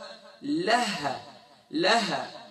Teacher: اقصی حلق، یعنی سینے کی جانب والا، یعنی باٹم آف تھروٹ، یہاں سے ہا ادا ہوگا